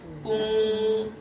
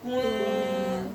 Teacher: Udara nggak langsung keluar karena tertahan bibir maju.